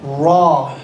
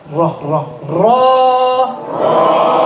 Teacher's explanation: The tip of the tongue is touching the palate with a little roll.